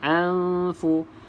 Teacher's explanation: Nun kosong selepasnya bukan huruf lam, bukan huruf ra. Jadi kena dengung.